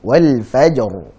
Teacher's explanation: Di situ ra-nya dalam kondisi waqaf, sebelumnya sukun dan sebelumnya fathah, dan ini jelas dibaca sebagai tafkhim atau tebal. Wal fajr. Ra-nya tebal kan.